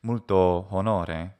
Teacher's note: I create a hiatus, a hiatus in between the two vowel sounds, which is technically a barbarism, but is talked about as something that's done like just for clarity and emphasis.